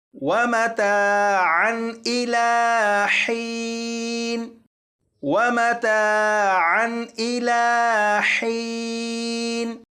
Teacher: عین کے اوپر 2 زبر ہیں یعنی تنوین ہے، تو اس تنوین پر غنہ نہیں کریں گے